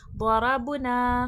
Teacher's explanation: दौद हुर्फ मुस्तआलिया है, मोटे हुर्फों में से मोटा करके पढ़ा जाएगा।